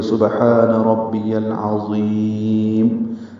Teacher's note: عین وسط حلق سے ادا ہوگا